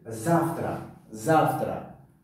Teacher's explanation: Завтра, завтра. Ударение дар ҳарфи а аст ва ин завтра. А баландтар талаффуз шуда истодааст.